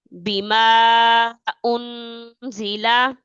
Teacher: اب انزیلا، انزیلا کے نون کے اوپر جو ہے یہ جزم ہے، ٹھیک ہے، انزیلا اس کے نون کے اوپر یہ جزم ہے، یہاں پر اخفا کریں گے، مطلب آواز کو ناک میں چھپا کر پڑھیں گے